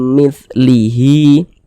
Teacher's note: mimah di bagian mim kita tahan kita panjangkan sejenak mim mitlihi Hi dibaca panjang Hi dibaca panjang ini namanya adalah Mad Silah qasiroh